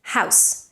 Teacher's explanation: House ends in a voiceless S.